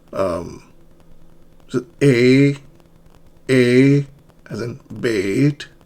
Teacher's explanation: Your tongue is in midfront and lips are slightly spread.